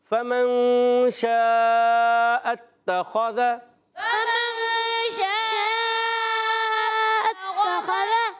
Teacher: فا ادا ہوتا ہے اوپر والے دانتوں کے کنارے نیچے والے ہونٹ کے تر حصے سے لگتے ہیں · کون سا قاعدہ ہے اخفا کی معنی ہے نون کو چھپانا نون کو چھپا کر ادا کرتے ہیں اور ناک میں آواز لے جاتے ہیں اور اس در ایک الف کا غنہ بھی کرتے ہیں کیونکہ